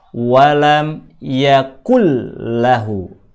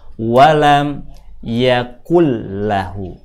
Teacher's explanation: Ditulis walam yakun lahu, dibaca walam yakul lahu. Pembacaan seperti ini menggabungkan dua huruf jadi satu dalam istilah ilmu tajwid dinamai dengan bacaan idgham. Menggabungkan dua huruf jadi satu, atau memasukkan satu huruf ke huruf yang lainnya, setelah dimasukkan maka jadi yang nampak adalah bunyi satu huruf. · Ditulisnya dua huruf, walam yakun dan lahu. Dibaca jadi terdengar bunyi satu huruf saja, karena antara nun dan lam sudah digabungkan menjadi satu.